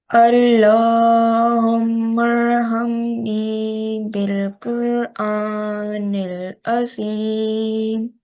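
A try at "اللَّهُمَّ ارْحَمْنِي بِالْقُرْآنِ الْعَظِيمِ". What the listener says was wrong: Just remember we learned about the gunna on meme mushaddad. So just stay here like Allahumma.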